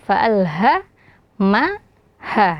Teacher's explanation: huruf yang keluar dari pangkal tenggorokan, fa'alha ma ha ya, ada huruf H yang setelahnya ada alif, maka dibaca 2 harokat.